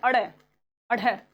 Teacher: जैसे ही आप इनको बोल रहे हो तो एक बार बोल के देख लेना, आपकी जीभ जो है वो एकदम से झटाक से ऊपर से नीचे गिरती है, इसीलिए इसको फेंका हुआ यानी कि उत्सिप्त आप बोलते हो। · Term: उत्सिप्त व्यंजन